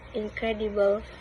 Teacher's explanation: In the word incredible, for example, the primary stress fell on the second syllable